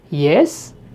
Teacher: the same words spoken with a rising tone